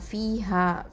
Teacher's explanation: ஃபீ யா மத்து இருக்குது, 2 அலிஃப் நீட்டணும். அடுத்தது ஹா, ஃபீ ஹால ஹா இருக்குது, அதுவும் அலிஃப் மத்து இருக்குது, 2 அலிஃப் நீட்டணும்.